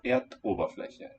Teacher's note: It loses its final vowel. And Ober keeps its glottal stop.